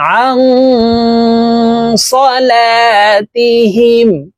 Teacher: এই নুন সাকিনকে নাকের ভিতরে লুকাইয়া গুন্নার সহিত পড়ব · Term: ইকফা গুন্না